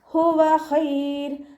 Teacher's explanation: ഹ മഖ്റജ് അഖ്സൽ ഹൽക്കാണ്, തൊണ്ടയുടെ അവസാന ഭാഗം. സൗണ്ടിനെ ശ്രദ്ധിച്ചിട്ട് ഹംസയായി പോവാതെ ശ്രദ്ധിക്കുക കേട്ടോ.